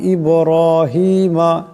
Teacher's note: বা সাকিন আওয়াজটিতে কলকলা করে পড়তে হবে ঝটকা খাবে এখানে দম ছাড়লে এটা এক পরিমাণ লম্বা হয়ে যাবে ইব্রাহিমা ইব্রাহিমা